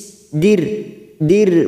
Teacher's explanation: ro sukun yang didahului kasr kita baca tarkik tipis